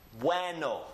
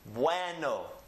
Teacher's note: So we keep these together in one syllable and they form one sound. You can distinctly hear the U and you can distinctly hear the E, but they are blended together as a diphthong as one sound.